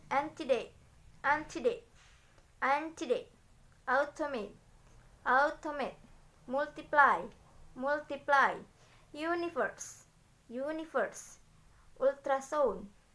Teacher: there is usually primary stress on the first syllables, followed by unstressed syllables and secondary stress on the third syllables